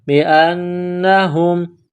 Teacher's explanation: پڑھنا ہے، ذالک بأنہم، حمزہ کو نون کے ساتھ ملانا ہے، نون میں غنہ کرنی ہے، آواز ناک میں چھپانی ہے